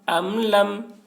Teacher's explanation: میم ساکن کے بعد با اور میم کے علاوہ حرف لام ہے، اس وجہ سے میم کو ظاہر کر کے پڑھیں گے، اس کو اظہار شفوی کہتے ہیں۔